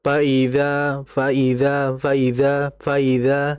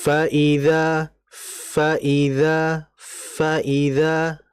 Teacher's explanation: Tapi hamesnya sudah nampak. Sehingga kita harus menampakkan terlebih dahulu, harus menjelaskan terlebih dahulu sifat hammas fanya-nya